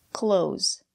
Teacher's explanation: The TH sound is silent. We pronounce this word the same way we pronounce close the door.